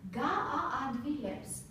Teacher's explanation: So we should pronounce separately the vowels as we don't have diphthongs.